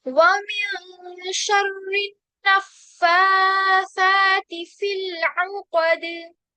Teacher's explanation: देखिए नून पे हम गुन्ना करेंगे, फिर उसके बाद ना, नून पे सिर्फ फतहा लगी है, ये जो अलिफ सगीरा नजर आ रही है ये फा और फा पे लगी है, तो नून को नहीं खींचेंगे, फा और फा को खींचेंगे 2 हरकत के बराबर। फिर ता पे किसरा है तो ता को बारीक करेंगे, फिल, फिल तो यहाँ पर तवसुत करेंगे, औ कद में क्या होगा, दाल पे कलकला होगा और काफ जो है वो मोटा, ठीक है।